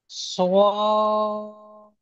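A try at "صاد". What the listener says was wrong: জি, সওয়াত নয়, সদ। শেষে দ উচ্চারণ হবে। শেষে দ উচ্চারণ হবে। সদ।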